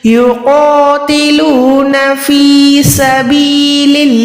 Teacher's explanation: यहाँ पर अल्लाह का नाम बारीक रखेंगे, लाम पे ज़ेर है